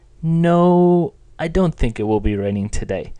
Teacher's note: Do you hear the tone in no? That's a high-pitched level tone.